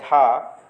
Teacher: अघोष नहीं है बल्कि सघोष है